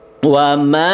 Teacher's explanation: itu disebutnya hukumnya disebut mad jaiz munfasil. Dibaca 4 sampai dengan 5 harokat ya.